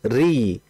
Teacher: Karena ro-nya dalam kondisi yang kasroh, yang dimana dia itu muraqqaq, dia tipis.